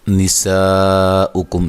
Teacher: سین کو باریک سیٹی سے ادا کرنا ہے، اور یہ الف مدہ کے بعد حمزہ آ رہا ہے، اسی کلمہ میں یہ مد واجب ہوگی، اور کاف کو باریک پڑھیں گے۔